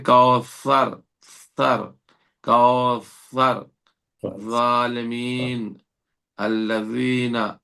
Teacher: تو آج کے حرف میں اتنا ہے کہ یہ تین لفظ جو ہمارے ذا، ذال سے زبان کا اگلا حصہ، نوکیلا حصہ دانتوں کے نیچے کے حصے سے لگتا ہے سامنے والے اوپر کے دانتوں کے